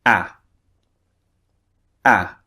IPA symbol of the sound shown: æ